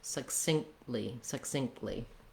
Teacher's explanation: the k and the t both get stopped and the t kind of drops as a result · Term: stop sounds